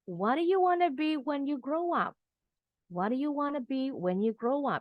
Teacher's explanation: Intonasinya turun tetap ya, WH question.